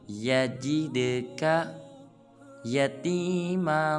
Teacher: جب جیم کو دال ساکن کے ساتھ ملائیں گے تو دال کو قلقلہ کریں گے، ین کے ہلائیں گے اور پڑھیں گے یجدک یتیما۔